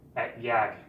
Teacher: Here's another thing about this case in the we case of the present form. In some dialects, instead of ending with S, it ends with G.